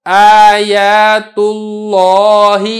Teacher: چونکہ لفظ اللہ سے پہلے پیش ہے لہذا لفظ اللہ کو ہم نے موٹا کر کے ادا کیا